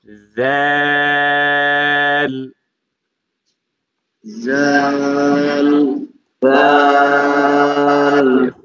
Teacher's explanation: জালের মাখরাজ হচ্ছে জিহবার আগা দাঁতের আগা